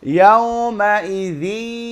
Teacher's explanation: আমার সাউন্ড কই চলে গেছে? নাকের মধ্যে। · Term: গুন্না